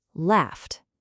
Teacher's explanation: It's voiceless. No buzz. So, we add the T sound.